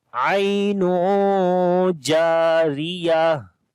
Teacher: Ra we read in light sound